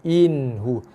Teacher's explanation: Kena zahirkan, jelaskan bunyi nun mati tanpa dengung. Tidak boleh sekali-kali dibaca dengan dengung. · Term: nun yang izhar